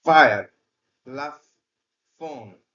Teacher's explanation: বাতাস অবস্থান করে বের হয়ে আসে ফ কিন্তু এই এফ সাউন্ডটি ইংরেজির এফ সাউন্ডটি হচ্ছে দন্তষ্ঠ বর্ণ অর্থাৎ উপরের পার্টির দাঁত এবং ঠোঁট নিচের ঠোঁটের সাথে ঘর্ষণ খেয়ে এই শব্দটি উচ্চারিত হয়